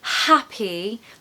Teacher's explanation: really lovely breathy sound at the start of that word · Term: H sound